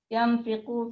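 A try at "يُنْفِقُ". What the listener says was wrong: Yunfiqu ya, bukan yanfiqu, tapi yunfiqu.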